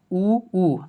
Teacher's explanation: अब आप लोग उच्चारण करके देखिए, जब ऊ और बड़ी ऊ का उच्चारण करते हैं तो एकदम मुंह एकदम छोटा सा गोल हो जाता है